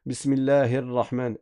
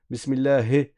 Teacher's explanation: dans la basmala, il faut faire attention à bien faire des kasra au niveau du ha et au niveau du noun. Ici, le ha et le noun.